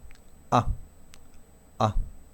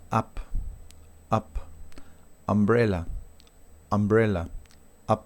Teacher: no es una A abierta como la anterior A, ¿sí? Es una A más neutral